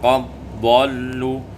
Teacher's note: Pada ayat 167 faqad dhallu, idghamud dal fi dhad, diidghamkan dal pada dhad menjadi qad dhallu